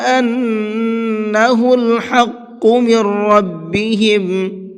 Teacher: حق کے حا کو حلق سے نکال کر کے پڑھیں گے اور قاف کو پر کر کے پڑھیں گے